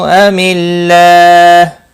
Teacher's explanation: اللہ کا لام اس زیر کی وجہ سے باریک پڑھا جائے گا